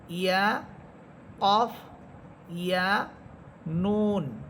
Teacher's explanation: জিহ্বার গোড়া উপরে তালুর সাথে লাগবে